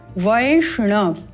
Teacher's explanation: देते हैं वय श मुर्धन्य श मुर्धा से उच्चारण करना है पुनः मुर्धा से ण का उच्चारण वैष्ण इस प्रकार से केवल उच्चारण स्थान का ध्यान देना है